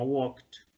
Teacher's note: Es decir, cuando yo digo walk, ese k final no me hace vibrar las cuerdas. Por eso, al ponerle ed suena como t, suena una t al final.